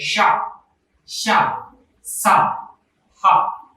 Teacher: గాలి బయటకు వస్తూ ఉచ్చరింపబడేటువంటి దాన్ని ఏమంటామంటే ఊష్మాలు అంటాం